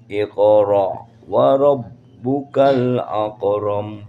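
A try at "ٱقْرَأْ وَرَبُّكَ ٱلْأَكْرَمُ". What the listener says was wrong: Ak. Kalau kaf bukan mantul, tapi ak.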